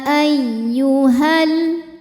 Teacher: ini dipanjangkan dua harakat namun dibaca panjangnya hanya saat berhenti saja jika diwasalkan atau diteruskan maka madnya ini gugur · lam fathah sukun bertemu sukun tidak B tidak bisa dibaca sehingga sukun pertama dilepaskan ketika wasal Jadi h-nya pendek · lam tasdid Ini mengandung dua lam lam sukun dan lam fathah lam yang sukun enggak dibaca lam yang kedua yang dibaca atau kita baca masuk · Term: alif lam syamsiah